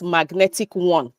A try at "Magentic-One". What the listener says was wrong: magentic. You might say magnetic, but it's magentic-one.